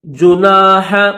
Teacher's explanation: ہا کو حلق سے نکالیں گے یعنی گلے سے اس کو ادا کریں گے